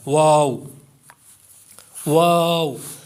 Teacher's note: है वाव दोनों होठों की गोलाई से अदा होता है कि जब भी आप वाव को पढ़ेंगे तो होठ आपके गोल हो जाएंगे · دونوں ہونٹوں کی گولائی سے ادا ہوتا ہے کہ جب بھی آپ واو کو پڑھیں گے تو ہونٹ آپ کے گول ہو جائیں گے، ہونٹوں کی گولائی سے یہ ادا ہوگا، واو، واو۔